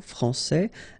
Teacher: you get this final S that you don't pronounce